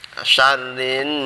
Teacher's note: Ini bacaan gunnah, yaitu apa aja, mim dan nun ketika bertasydid itu disebut bacaan gunnah, dibaca berdengung sebanyak satu alif atau dua harokat, dua ketukan